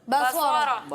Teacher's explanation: صاد میں سیٹی کی آواز آئے گی، ٹھیک ہے